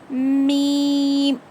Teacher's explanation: दोनों होठों को टाइटली बंद करके खोलते हैं, तब जाके मीम अदा होगा